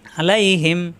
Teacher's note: আ কণ্ঠনালীতে চাপ দিয়ে